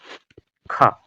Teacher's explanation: इसका उच्चारण भी कंठ से होता है लेकिन यह महाप्राण है लेकिन यह खा महाप्राण होने के साथ साथ अघोष वर्ण यह